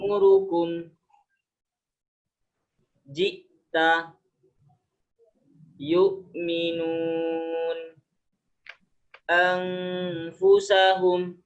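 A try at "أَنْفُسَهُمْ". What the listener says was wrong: Bukan an. An disamarkan ikhfa. An ke huruf fa-nya langsung ya. Anfusahum. Bukan ang. Ang enggak. An langsung ke fa-nya.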